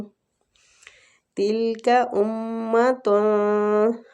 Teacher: میم مشدد غنہ کریں گے، تنوین کا اخفا کریں گے اور اخفا بھی پور ہوگا، قاف کے مخرج کے قریب جا کے کریں گے اور دال پہ قلقلہ کریں گے۔